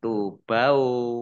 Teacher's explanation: wawunya dibaca double, ada tasdidnya